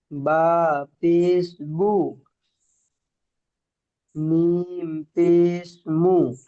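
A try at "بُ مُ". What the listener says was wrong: মাশাআল্লাহ, খুব সুন্দর পড়েছেন।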